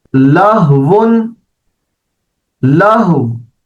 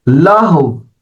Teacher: یعنی آپ جب اس کو پڑھیں گے لہو تو آخر میں آپ نے ہونٹوں کو گول کر دینا ہے، ہلکی سی واو کو آپ نے ظاہر کرنا ہے